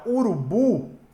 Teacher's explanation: Porque a sílaba mais forte dela é o bu. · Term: palavra oxítona